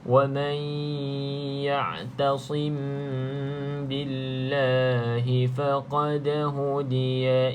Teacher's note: nampak dekat sini ada huruf da salah satu daripada huruf QQ pastikan ada sedikit lantunan pada huruf da yang sukun da mati